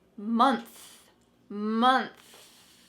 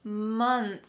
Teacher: notice what my tongue is doing at the end of this word it's out between my teeth and there's some lovely air streaming out